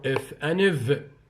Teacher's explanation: That is, they are those consonants which are produced between the lower lip and the upper front teeth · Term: labiodentals